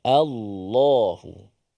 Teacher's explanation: Okey, lam tu ditebalkan. Betul-betul lam tu yang solid lam Allah. Cuma lam tu nak ditebalkan.